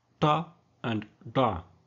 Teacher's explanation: They are produced with the underside of the tongue against the hard palate, that is behind the alveolar ridge in the mouth. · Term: retroflex consonants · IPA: /ʈ/ and /ɖ/